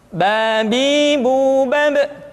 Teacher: dikeluarkan dengan cara merapatkan kedua bibir kita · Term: huruf ba